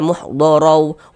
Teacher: Nah, karena ini tanwinnya bertemu dengan huruf waw, sedangkan huruf waw huruf idgham bi gunnah. Jadi tanwinnya dimasukkan ke huruf waw, dibaca muhdorau wama, dimasukkan ya, kemudian didengungkan. Nah, digunnahkan sepanjang 2 harokat.